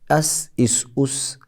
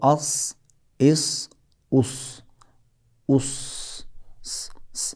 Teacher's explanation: سین کو بھاری ادا کریں گے، زبان کو چمچ کی طرح اوپر کے تالو سے لگائیں تو یہ صاد ادا ہو جاتا ہے